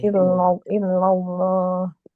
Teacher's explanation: Kalau cuma sekedar la aja belakang tidak dinaikkan dikit itu susah untuk tebal gitu ya. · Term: tafhim